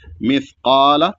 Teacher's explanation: سا ہے یہ اور ساکن ہے، تو اس کو سین نہیں پڑھنا ہے